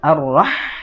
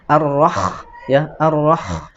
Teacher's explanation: tidak perlu dingorokkan karena ha itu tidak ngorok seperti kha